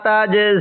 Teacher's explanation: আমরা সেখানে এক আলিফ টান দিব তাজ এই জিমের মধ্যে একটু ধাক্কা দিয়ে পড়বো কারণ জিমটা হলো কলকলার হরফ